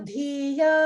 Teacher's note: So just notice the Mahaprana, Dhi in Dhiya.